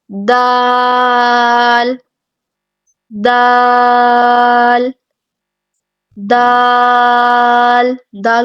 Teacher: زبان کی نوک جو ہے وہ ثنایا علیا کے جڑ سے لگے گی